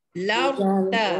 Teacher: Ra tu ditebalkan. Ra ditebalkan, tafkhim ya. Hukum dia tafkhim. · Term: Ra tebal